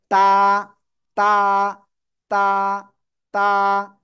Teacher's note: জিব্বার আগা উপরে দুই দাঁতের গোড়ায় লাগিয়ে এক আলিফ টেনে উচ্চারণ করবেন